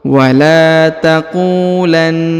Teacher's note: huruf ku dipanjangkan 2 harokat karena di depannya terdapat waw sukun. Wala taqulanna, huruf na ditekan dan ditahan karena di atasnya terdapat tanda tasdid atau penekanan.